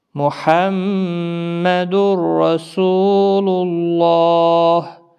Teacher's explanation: اللہ کا لام موٹا پڑا جائے گا